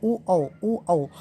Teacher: ओंठ आपस में मिल जा रहे हैं, तो इसे बोलते हैं कंठोष्ठ